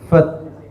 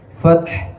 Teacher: jangan hilangkan huruf ha di akhir ayat